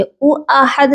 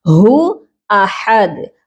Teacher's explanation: ہا کی آواز سینے والے حلق سے آئے گی